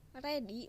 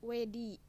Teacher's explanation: likuida L dan R ditukar dengan bunyi luncuran W dan Y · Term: peluncuran